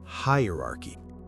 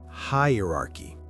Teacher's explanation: The first syllable is hi. Like saying hi to someone. and that's where the stress is. >> Then uh very quick and soft almost like uh when you're thinking.